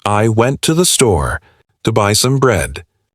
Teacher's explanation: The most important words are went, store, and bread. The words I, to, the less important. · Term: stress timed